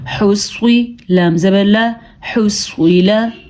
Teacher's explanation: سواد کو ہم نے پر پڑھا ہے کیونکہ سواد حروف مستعلیہ میں سے ہے۔